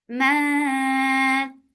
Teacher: This ikhfa is light, so keep the sound in your nose for a longer time. And to make ikhfa light, you're keeping your tongue straight.